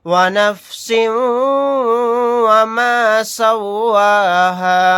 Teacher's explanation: ونفس وما سواها واو زبر و نون فا زبر نف ونف سین واو دو زیر سیوں ونفس سین کو واو میں ملا دیں گے